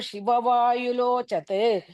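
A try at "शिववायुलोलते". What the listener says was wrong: Lo Late. Lo Chat, you are saying. Lo Lat.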